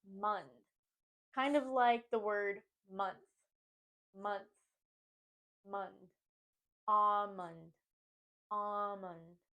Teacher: The second syllable is also sometimes pronounced as mond, but to say it correctly, we want to think of it as mund. Kind of like the word month.